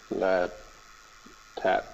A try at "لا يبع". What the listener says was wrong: لا يبع. No, you said تبع because you were used to تحاسدوا تناجشوا تباغضوا تدابروا. You said لا تبع.